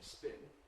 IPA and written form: spɪn (spin)